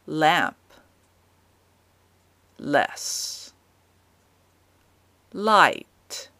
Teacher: L Japanese speakers use the flapped r for the American L the tongue tap is too short so glue your tongue to the gum Ridge